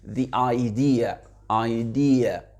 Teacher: the, le E devient I, pourquoi? Parce que la voyelle d'après, c'est une voyelle. Le mot d'après, pardon, c'est une voyelle, donc ça fait the idea, idea, d'accord?